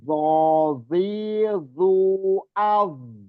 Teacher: Jadi dho itu ada matobi'i, ada alifnya, dibaca panjang.